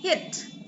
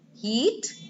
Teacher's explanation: the shorter one we just we didn't pull it that much and the longer one we pulled it's a lot more